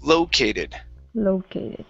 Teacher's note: Right here, instead of located, it's an O. The O, this receives the stress at the beginning.